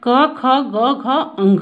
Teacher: अब क ख ग घ अंग का उच्चारण स्थान कंठ होता है, यानी हमारी जिह्वा कंठ को छूती है तो वहाँ से क ख ग घ अंग निकलते हैं